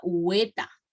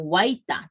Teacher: En cambio, en la zona de Conchucos, ahí pronuncian huaita, tal cual está escrito. En cambio, nosotros, huaylas y vertientes, monoptongamos esta palabra · Es la monoptongación, es cuando estas dos palabritas, la A y la AI, cuando se juntan, esa AI en el plano oral va a sonar como una E alargada